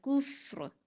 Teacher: را کے نیچے زیر ہے لیکن جب وقف کریں گے تو ہم زیر نہیں پڑھیں گے ساکن کریں گے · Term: را موٹا